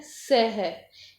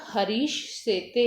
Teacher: दंत्य सकार को हम जो है तालव्य शकार के अंतर्गत इसको हम परिवर्तन कर देंगे तो रूप बन जाएगा हरीश सेते, इस प्रकार से।